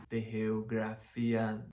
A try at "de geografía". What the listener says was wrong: You're missing the R in geogra. You don't need your lips to say an R in Spanish. Gra. It should be the gra. Now that I think about it, gra, geogra, gra. Your lips move in, the sound changes.